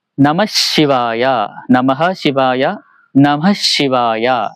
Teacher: അതിനെ നമ്മൾ ഉച്ചരിക്കാൻ നമശിവായ എന്ന് ഉച്ചരിക്കില്ല, നമശിവായ. ആ വിസർഗവും അടുത്ത അക്ഷരവും കൂടെ കൂട്ടി യോജിപ്പിക്കുമ്പോൾ അവിടെ ഒരു ഉച്ചാരണ വ്യത്യാസം വരും. ആ ശ ഇരട്ടിച്ച് ഷാവും. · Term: വിസർഗസന്ധി